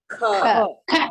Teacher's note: When you say ka, you can see you breathe out more air. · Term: Mahaprana